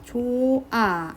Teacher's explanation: 하나가 없어지면 됩니다 무슨 말이냐 좋아 발음할 때 발음이 안 나죠 표기할 땐 ㅎ이 있는데 발음할 때 없어집니다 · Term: 탈락